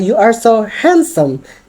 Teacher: Jadi kita menekan di kata handsome itu